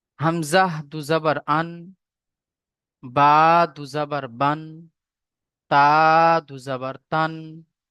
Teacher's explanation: এই তানবিনের সাথে, অর্থাৎ দুজাবার যখন উচ্চারণ করব, দুজের যখন উচ্চারণ করব, দুপেশ যখন উচ্চারণ করব, তখন লাস্টে আমাদের দন্তের ন চলে আসবে। উন, আন, ইন, উন, এই শব্দটুকু চলে আসবে।